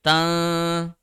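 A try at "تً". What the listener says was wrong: No, you have to make sure your tongue does not touch anywhere. Tan. That's better. Tan. Yeah, that's ikhfa. And then after that, we will apply ghunna. Now in ghunna, we have to press the roof for 2 seconds. Keep on pressing the roof for 2 seconds. That will be tan.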